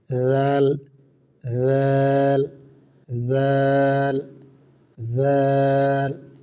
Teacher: তিন হরফের মাখরাজ এক স্থান থেকে উচ্চারিত হয়। জিহ্বার আগা, সামনে উপরে দুই দাঁতের আগার সঙ্গে লাগাইয়া।